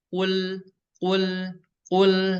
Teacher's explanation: Tapi huruf lam ini memiliki sifat yang namanya yaitu bainiyah ya, ketika berharokat bainiyah atau tawasud. Jadi ketika berharokat sukun huruf lam ini halus dialirin tapi setengah ya. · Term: huruf lam sukun